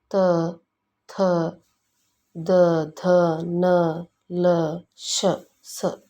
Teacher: ಹಲ್ಲುಗಳ ಸಹಾಯದಿಂದ ಹುಟ್ಟುವುದರಿಂದ ಇವು ದಂತ ವರ್ಣಗಳೆಂದು ಕರೆಸಿಕೊಳ್ಳುತ್ತವೆ